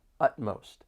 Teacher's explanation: there are 2 syllables and the stress is on that first syllable